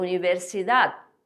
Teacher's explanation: O Dzinho tem que ser pronunciado também, o último D, que é como se fosse só um toquezinho assim na língua.